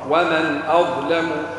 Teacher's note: ما تعملش غنى هنا بعدها الهمزة حكمها الإظهار